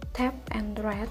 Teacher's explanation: T untuk tap and rat. Bagian oral diblokir dengan menekan ujung lidah ke alveolar.